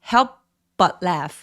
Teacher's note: help 할 때 P 소리 가볍게 내셔도 되고 아니면 약간 끊어지는 느낌으로 help but laugh 라고 읍 하면서 피읍 받침처럼 그렇게 표현해 주세요.